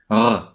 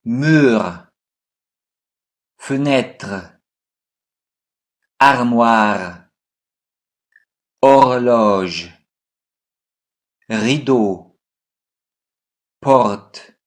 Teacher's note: R is pronounced like a rolled sound.